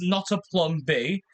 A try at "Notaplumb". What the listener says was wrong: I don't know why you pronounce my YouTube name like that. It's not. It's one word. It's one word. Not a plum.